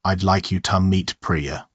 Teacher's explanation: the word to is almost always reduced to a schwa